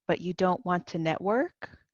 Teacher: My voice going up shows that it's a question.